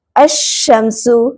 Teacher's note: تو لام کو نہیں پڑھا جائے گا اور شین کو تشدید کے ساتھ پڑھا جائے گا، یعنی لام کی آواز ظاہر نہیں ہوگی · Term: حروف شمسی